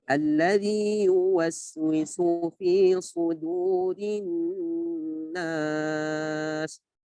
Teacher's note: Alladzi jangan yuwas. Wa di sini makhrajnya adalah syafatain, kedua bibir membentuk bulatan wa.